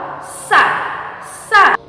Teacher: Nah, untuk sa dilapaskan dengan ujung lidah dipertemukan dengan gigi seri bagian bawah ya. Untuk sa mempertemukan ujung lidah dengan gigi seri bagian bawah.